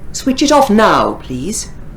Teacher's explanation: so now is important here and off is important